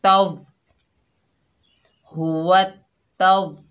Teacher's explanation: तो वाव को ता से मिलाएंगे वत हुवत। ता के ऊपर ज़बर, आगे फिर वाव मुशद्ददा है तो ता को वाव से मिलाएंगे